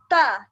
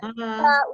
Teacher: Ta ujung lidah ke gusi gigi. Ta. Ini gigi, ini gusi.